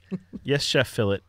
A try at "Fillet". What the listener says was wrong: The T is not silent.